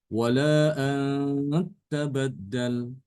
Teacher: Ada penekanan pada ta.